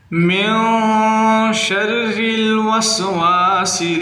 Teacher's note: نون مشدد ہے، غنہ کریں، سین کو سیٹی کی آواز سے نکالیں